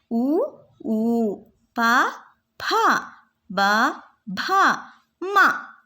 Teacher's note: ಓಷ್ಟ್ಯ ತುಟಿಯಲ್ಲಿ ಹುಟ್ಟುವ ಅಕ್ಷರಗಳು